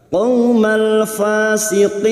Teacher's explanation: bertemu mad dengan huruf hidup yang dibaca waqaf mad alif li sukun, 4 harakat kita panjangkan